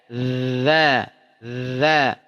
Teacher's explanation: Dia punya sifat rokhwah, tidak bernapas tapi za, gesek.